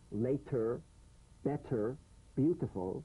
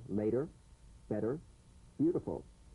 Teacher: The medial T becomes a soft D. All right, it's not a complete D, but it goes toward a D.